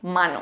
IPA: 'mã.no